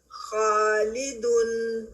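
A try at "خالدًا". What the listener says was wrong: Heavy پن میں کمی ہے، فتح کے ساتھ ہیوی پن میں کمی ہے. خالدن،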